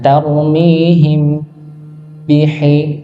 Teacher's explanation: mim sukun bertemu dengan ba, maka dia ditahan lebih panjang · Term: ikhfa syafawi